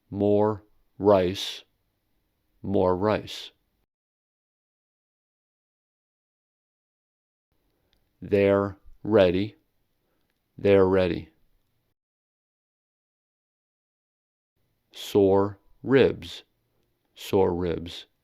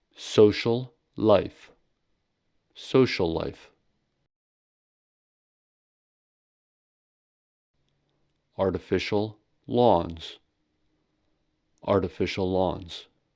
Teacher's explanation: two continuous consonants are not pronounced twice, but pronounced once, but longer than usual. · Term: consonant lengthening